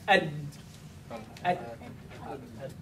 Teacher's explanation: My chest is resonating with my vocal cords vibrating inside.